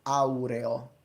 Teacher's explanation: But we do have the adjective aureo, which maintains the full diphthong au, which belongs to classical Latin, not spoken vernacular.